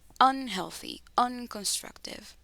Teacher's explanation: En estas palabras de acá abajo, unhealthy and unconstructive, esta de acá y esta de acá, el estrés se va a colocar en el un. Unhealthy, unconstructive.